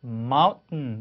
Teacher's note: t를 하면서 콧소리를 이렇게 내는 겁니다. 약간 막힌 것 같은 소리예요. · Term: held t